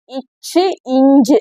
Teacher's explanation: நடுப்பகுதி வந்து நடுவண்ணத்தின் இடைப்பகுதியில் பொருந்துவதால் பிறப்பது